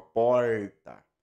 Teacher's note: quem nasceu em Goiânia, por exemplo, a língua no R, ela já dobra e toca o céu da boca.